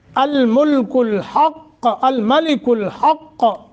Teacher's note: حق نہیں پڑھنا، حق قاف کو موٹا کرنا ہے، ہا کا مخرج ادا کرنا ہے